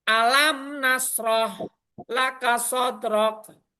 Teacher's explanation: Jadi baca mimnya itu jelas, mati, nunnya juga jelas, enggak ada samar-samar dengan dengung. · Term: Izar Safawi